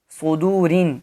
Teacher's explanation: اس را کو بھی مرقق یعنی باریک پڑھیں گے، کیونکہ را کے نیچے جب بھی زیر یعنی کسرہ ہو تو یہ باریک پڑھا جائے گا.